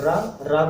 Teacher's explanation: ठीक है, और रा को लुंठित कहते हैं। लुंठित मतलब जिसके उच्चारण में जीभ तालु से लुढ़क कर स्पर्श करे